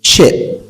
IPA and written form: tʃɪp (chip)